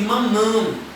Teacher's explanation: o mam fica um som mais anasalado devido ao tio que está acima do A. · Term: som anasalado